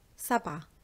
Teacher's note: when I'm saying سبعة on its own, I do not pronounce the ت at the end, سبعة. But when it's with آلاف, that means thousands, I assimilate the last letter from سبعة, which is the ت, with the أ at the beginning of ألف.